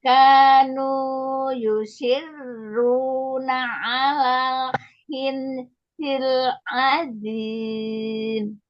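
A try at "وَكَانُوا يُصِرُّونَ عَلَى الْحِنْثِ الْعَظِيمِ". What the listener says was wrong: Ini bagus, cuman lupa dengung. Nun ketemu sa dengung kan ikhfa. Jadi alal hinsi. Nah, dengungnya lupa.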